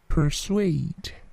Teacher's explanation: P-nya tidak terlalu plosif ya